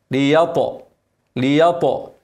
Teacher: اكسر اللام مشدده وافتح الياء والطاء ساكنه مفخمه مقلقله